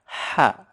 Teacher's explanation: Ini bukan seperti ha dalam bahasa Indonesia ya. Karena ha ini lebih lembut gitu ya, lebih tipis.